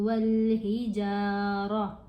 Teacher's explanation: ये जो गोल ता है, अगर इसके ऊपर वक़फ़ कर रहे हूँ तो ये साइलेंट हो जाती है और हा की आवाज़ देती है